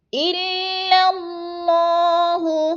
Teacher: الا باریک، اللہ موٹا پڑھا جائے گا